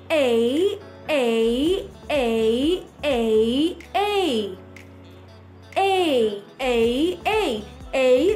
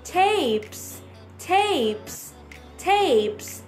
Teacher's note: two vowel sounds together the sound of e and the sound of i together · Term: diphthong